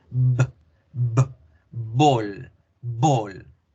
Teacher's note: Y la B bilabial, que de aquí en adelante se va a llamar B bilabial, debemos generarla con vibración.